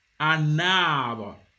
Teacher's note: you will hear na, you will hear that N